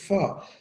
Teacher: The lower lip meet the upper teeth if we produce the sound फा। ठीक है, एफ जो है ना, इसको अगर साउंड में जाएंगे तो फा, और फा आप कहें तो लोअर लिप्स आपके अपर टीथ को टच करते हैं, फा उससे पैदा होता है।